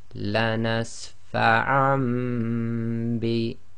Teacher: So the fathatain on the ayn, what they've done, they've dropped one of the fathas and substituted it for a meme to show that the noon sakin in the fathatain has been substituted for the meme because it's followed by the ba. So this is an iqlab.